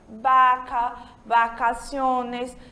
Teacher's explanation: a letra V, nosso V de vaca, em espanhol, a gente pronuncia como se estivéssemos pronunciando o nosso B de bola